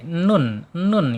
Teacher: ujung lidah menyentuh ee langit-langit yang depan ya mendekati pangkal gigi seri